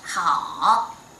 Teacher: third tone, down first and then up